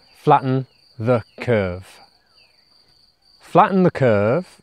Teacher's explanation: the stress is on the first syllable and the second syllable of flatten is very weak